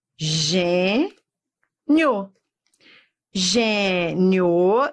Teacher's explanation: vou dar semivogal que é o som fraco pro forte gênio isso é um ditongo crescente do fraco pro forte